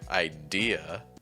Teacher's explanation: it adds an R sound where American English won't have it